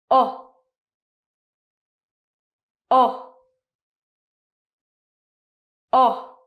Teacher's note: the sound O is a diphthong, so it's actually two vowel sounds. O. And as you can see, when I say it, my mouth is round, it moves, and it gets smaller. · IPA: /əʊ/, /ɒ/